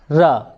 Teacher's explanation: जब इसको बोलते हैं तो हमारी जो जीभ है मुड़ के मूर्धा की तरफ लगती है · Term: लुंठित